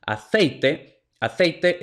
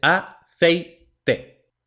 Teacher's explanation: son dos vocales seguidas que se pronuncian en una misma sílaba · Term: diptongo